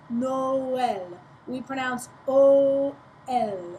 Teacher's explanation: The tréma, which is the two little dots, makes it so that you have to pronounce both vowels separately in French.